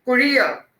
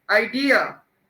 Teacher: you have to stress on the middle one. इसमें तीन हिस्से हैं.